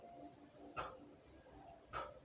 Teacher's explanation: So this is what makes the sound p a plosive consonant, because there's a partial retention of the air followed by the sudden release